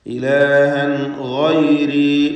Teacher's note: ഗൈരി ഗൈനിനെ തഫ്ഖീം ചെയ്യണം. ഇസ്തിഅലാഇൻ്റെ അക്ഷരങ്ങളിൽപ്പെട്ടതാണ്.